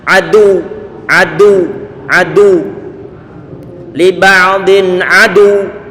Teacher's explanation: Suara antum angkat sedikit di bagian terakhirnya, diangkat. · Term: nibroh